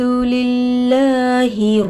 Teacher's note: لام پر کھڑا زبر برابر ہے الف مدہ کے تھوڑا کھینچ کر پڑھیں گے. لفظ اللہ کے لام سے پہلے زیر آ کر ہے. لفظ اللہ کے لام کو باریک کر کے پڑھیں گے. ہا پر زیر کی حرکت ہے جلد پڑھیں گے.